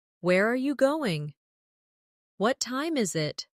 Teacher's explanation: for information questions, those starting with who, what, when, where, why, how, the tone often falls at the end.